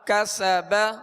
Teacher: سین میں سختی سیٹی کی آواز ہوگی اور اس کو باریک پڑھیں گے